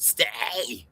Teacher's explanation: I just kind of had to annunciate the T more like stay